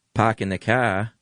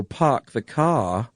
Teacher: you're dropping the R as with that hard Boston accent